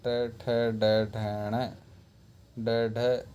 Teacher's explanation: उच्चारण स्थान है मूर्धा और नाम है मूर्धन्य